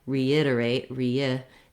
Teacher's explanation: between the E and the I, I naturally have a little bit of a glide sound sneaking in there. That's how we write the y sound in IPA, because I'm linking between those two vowels.